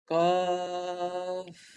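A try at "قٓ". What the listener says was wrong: Panjang lagi. 1, 2, 3, 4, 5, 6. Sampai 6 harakat.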